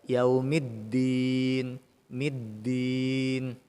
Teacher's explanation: huruf dal ketika tasydid itu wajib ditekan bunyinya. Tapi jangan sampai berbunyi huruf ta. Contohnya yaumiddin, middin itu mah ta.